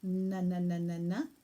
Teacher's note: Now, this is really important because we don't put the tongue in an N position. If you go na na na na na, you will feel that the tongue comes quite forward, in fact, onto the gum point behind the front top teeth, and onto the alveolar ridge, that little ridge that you might feel with your tongue.